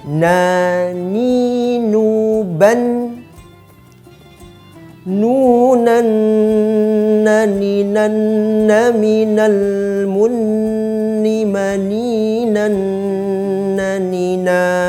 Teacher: Di sini ada huruf nun, yakni posisinya berada di ujung kepala lisan, bertemu dengan langit-langit dekat gigi seri yang atas.